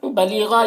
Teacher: یہاں پر یا مدہ ہے، 1 الف کے برابر کھینچیں گے